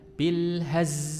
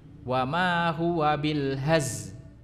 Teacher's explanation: Jadi dia membaca bil haz, huruf lamnya hilang.